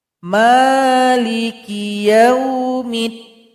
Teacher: Mim dipanjangkan 2 harokat · Kemudian di sini juga ada alif lam syamsiyah. Jadi mim yang kasroh langsung diloncatkan kepada huruf dal